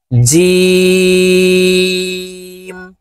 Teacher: ফা সাম জিম হরফ তিন আলিফ টেনে পড়তে হবে জিম জিম জিহ্বার মধ্যখান থেকে জিম হরফের উচ্চারণ হবে